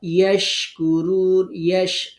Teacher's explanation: ইয়াশ শিন জিহ্বার মাঝখানে শক্ত করে, কুরুন রুতে তিন আলিফ টেনে নুনে সাকিন দিয়ে অক্ফ করতে হবে।